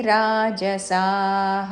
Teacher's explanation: రాజసా స దీర్ఘము తర్వాత విసర్గం